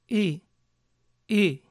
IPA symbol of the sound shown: ɪ